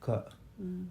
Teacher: When you say ka, if you put your forefinger near your mouth, there will be no air coming out. You will not feel it.